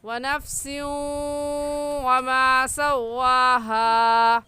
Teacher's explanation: تنوین کے بعد حروف یرملون میں سے واو آ جائے تو یہاں پر غنہ ادغام کے ساتھ ہوگا، اور ادغام کا مطلب یہ ہے کہ 2 لفظوں کو ایک کر دیا جائے.